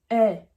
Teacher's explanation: A avec tréma se prononce E. C'est un E assez ouvert. C'est pas c'est E avec la bouche assez ouverte.